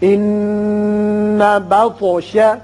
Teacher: نون مشدد ہے، غنہ کیجئے، اور طا ساکن ہے چونکہ اس لیے اس کی صفت قلقلہ ادا کریں گے. یہ حروف قلقلہ میں سے ہے.